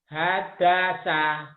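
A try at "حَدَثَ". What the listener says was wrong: Hanya kecil. Ha. Hadasa. Bukan ha gede. Ha gede ada gede. Hadasa.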